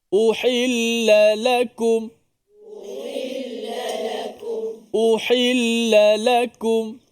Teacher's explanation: Cara orang Arab dia akan cuba bezakan intonasi tu, la tu. Sama ada yang pertama direndahkan, yang kedua dikuatkan.